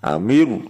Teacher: amiru langsung mencucu nih, amiru tebal soalnya